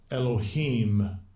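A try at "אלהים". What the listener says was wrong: And we don't pronounce it. Yeah, we don't pronounce it that in the Lashawan Qadash. There's no E in the Lashawan Qadash. You got Alahayim.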